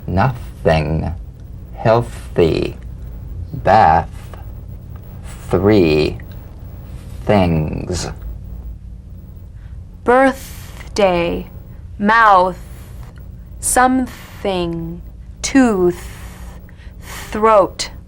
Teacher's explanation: the unvoiced tongue point to teeth fricative consonant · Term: voiceless th